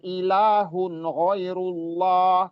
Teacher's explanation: Kata Allahnya juga tebal atau tafhim karena huruf sebelumnya ber dommah dan dipanjangkan juga dua harakat.